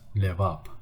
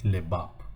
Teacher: This is the letter B, but we read it as a V when the B in the middle of the word or between the vowels. Levap. We do not say Lebap.